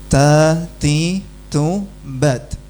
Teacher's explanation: ada desisnya pada setiap harakatnya termasuk pas sukun. Jadi bukan pas sukun saja nesis fathah kasr dahah juga nesis.